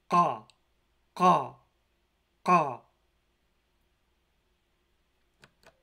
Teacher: the letter Q in Klingon represents an unvoiced aspirated uvular stop